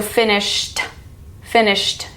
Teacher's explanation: finished is the T sound because the root word is ending in sh